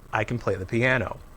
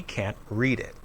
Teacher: can't is always stressed and has a clear vowel sound